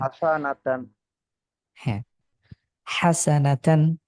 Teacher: হা কে কন্ঠের মাঝখান থেকে উচ্চারণ করেছেন